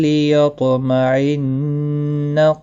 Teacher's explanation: نون مشدد پر غنہ ہوگا، قاف مستعلیہ ہے، پر پڑھا جائے گا۔